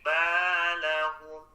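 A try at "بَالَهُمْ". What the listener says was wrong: Tadi bacanya balahum. Nah, jangan dipanjangkan kalau tidak ada mad ya.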